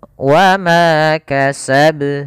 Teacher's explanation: qalqalah kubra, yaitu qalqalah yang terjadi di akhir bacaan kita